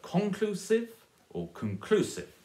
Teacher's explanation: Conclusive or conclusive? Yeah, stress on the middle syllable there.